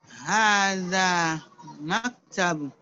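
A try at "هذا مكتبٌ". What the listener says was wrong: Maktabun. You need to read last vowel also. Maktabun.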